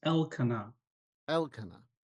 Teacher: there is a little stress on the first syllable, the EL.